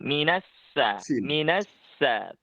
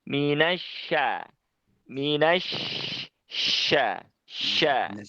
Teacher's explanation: Cuma kurangnya mungkin di syaitoni, minasya, shinnya itu mungkin agak sedikit ke dalam ya lidahnya. Jadi yang dipakai lidah bagian tengahnya, bukan yang depan. Kalau depan nanti keluarnya pasti huruf sin, minasa, minasa.